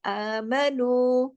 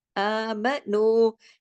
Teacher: नू को 2 हरकत, मीम को सिर्फ 1 हरकत